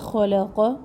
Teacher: لام باریک حروف میں سے ہے تو خا اور قاف کو موٹا پڑھنا ہے اور لام کو باریک